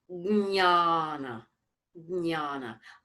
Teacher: even though I say jnana, there's a g in there, I try to place that g forward of the throat.